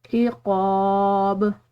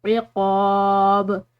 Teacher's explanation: عین اور قاف یہ دونوں حلق سے ادا ہونے والے حروف ہیں، اور با جو ہے یہ حروف قلقلہ میں سے آ رہا ہے تو اس کو ہم نے ہلاتے ہوئے چھوڑنا ہے.